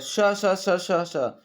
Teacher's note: जो श श श बोले जाता है वो आपका तालु से बोला जाता है, ना कि दंत से, ना ओष्ठ से, ना मूर्धा से